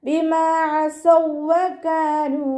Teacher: ഐനിൻ്റെ മഖ്റജ് ശ്രദ്ധിക്കുക. തൊണ്ടയുടെ മധ്യഭാഗം. · മീമിൻ്റെ കൂടെ വാവ് മദ് വന്നു. 2 കൗണ്ട് നീട്ടി കൊടുക്കുക.